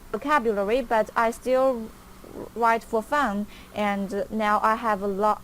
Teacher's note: it's very fast kind of mechanical we don't hear an intonation · It's very fast, kind of mechanical. We don't hear any intonation. We don't hear a rising voice. We don't hear stress. We don't hear pausing, anything like that.